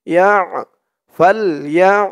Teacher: পরের আয়াত, ফা দিয়ে লাম ধরবে, ফা লাম জবর ফাল, ইয়া দিয়ে আইন ধরবে, ইয়া আইন জবর ইয়া, ইয়া আইনের উচ্চারণটা গলার ভিতর থেকে শক্ত হয়ে আসবে